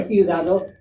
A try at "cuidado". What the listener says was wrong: No, cuidado. Cuidado. So that caution for city and caution, the UI are flipped. So city is ciudad. Caution is cuidado. And there's that hard C sound, just like how we would have, think like cumin, like the seasoning cumin, cuidado. So that C carries the same pronunciation there.